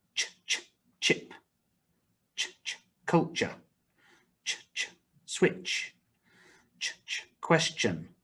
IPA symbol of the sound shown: tʃ